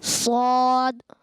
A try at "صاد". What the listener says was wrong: ایک بیٹا آپ نے نا ہونٹ گول کر دیے تھے. سوا ایسا نہیں، بلکہ بغیر ہونٹ گول کے سو. اور آپ نے قلقلہ نہیں کیا تھا.